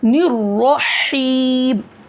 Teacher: ये हा हलक के दरमियानी हिस्से से अदा होगा